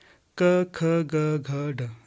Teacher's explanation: कंठ से उनका उच्चारण होता है जो क वर्ग के अंतर्गत आते हैं, क ख ग घ ढ ये आते हैं क वर्ग के अंतर्गत, इन्हें कंठी ध्वनि भी कहा जाता है, ठीक है, कंठी ध्वनि।